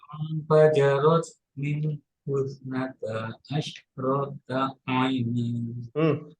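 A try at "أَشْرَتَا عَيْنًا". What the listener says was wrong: Ro-nya nggak panjang. Asyrata aina.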